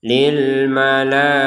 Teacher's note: Kalau dibaca waqaf berhenti maka kita harus mengganti huruf ta sebagai huruf H. Kalau menggabungkan huruf ta-nya kepada huruf berikutnya maka kembali sebagai huruf ta. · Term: tak marbutah